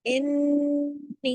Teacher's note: پہ یا مدہ بھی ہے، اوپر ایک مد بھی ہے، اور نون غنہ کی تشدید کی وجہ سے ڈبل نون ہے، پورا حق ادا کرنا ہے، پورا بڑا غنہ کرنا ہے